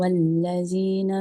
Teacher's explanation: dzanya masih ada desis za. Jadi dza bukan za.